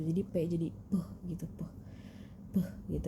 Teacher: Terus yang selanjutnya ada huruf P, yang dia tuh dibacanya P gitu, P. Jadi PH tapi dibaca P. Jadi ada hembusan udara yang kita ngomong itu.